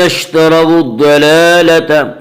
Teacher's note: اس کا قاعدہ یہ ہے کہ اگر را کے اوپر زبر اور پیش آئے تو را کو پر پڑھیں گے، را کے نیچے زیر آئے تو را کو باریک پڑھیں گے۔ یہاں را کے اوپر زبر ہے اس لیے را کو پر پڑھیں گے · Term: را پر